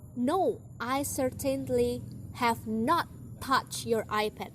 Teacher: she used the emphatic stress on not